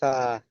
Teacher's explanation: জিভের আগা উপরে দুই দাঁতের আগার সাথে লাগিয়ে উচ্চারিত হয় সা